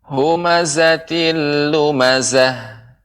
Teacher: huruf zai lebih ditambah desisnya atau getarannya